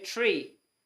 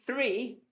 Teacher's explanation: we don't have that th sound over here very much. The th sound escapes Ireland.